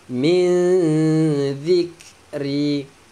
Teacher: Syakkim, tanwin bertemu mim, masukkan tanwin ke dalam mim, dengung